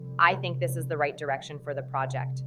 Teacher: make sure the last word project is at a slightly lower pitch than the rest of the sentence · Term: downward inflection